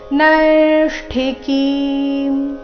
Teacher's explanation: ನೈ ಮೇಲೆ ದೀರ್ಘ ಬಂದು ಸೌಮ್ಯ ಆಘಾತ ಮುಂದೆ ಸಂಯುಕ್ತ ಅಕ್ಷರ ಇದೆ ಇಲ್ಲಿ ಅರ್ಧ ಮೂರ್ಧನ್ಯ ಮತ್ತೆ ಪೂರ್ತಿ ಠಿ ಇದೆ · ಇಲ್ಲಿ ಅರ್ಧ ಮೂರ್ಧನ್ಯ ಮತ್ತೆ ಪೂರ್ತಿ ಠಿ ಇದೆ ಅದು ರಸ್ವ ಇದೆ ಅದರ ನಂತರ ಇರೋ ಕಿ ದೀರ್ಘ ಬರಬೇಕು